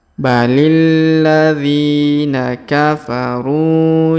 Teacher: huruf ru kita panjangkan 2 harokat karena terdapat waw sukun di depannya.